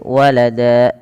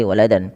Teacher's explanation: Tanwinnya diganti dengan panjang menjadi seperti mad tabi'i. Maka walada, cara membacanya menjadi walada, bukan lagi waladan. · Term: mad iwad